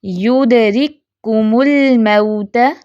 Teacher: ایک ہی دفعہ ہم کاف کو پروناؤنس کریں